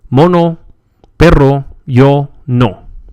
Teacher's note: O, like the O in hope, but without the glide.